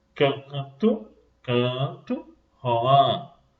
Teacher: Observem que parte do som sai pela boca e parte sai pelo nariz. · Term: Nasal